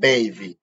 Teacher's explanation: when you say the letter B, like in baby, your two lips come together to stop the airflow for a second. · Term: bilabial sound